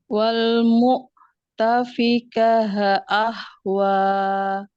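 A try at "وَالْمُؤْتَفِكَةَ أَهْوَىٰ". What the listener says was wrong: Nah, itu tak marbutoh ketika dia wasal, ketika dia hidup jadi apa? Huruf ta apa huruf ha? Jadi dibacanya ta, bukan ha ya.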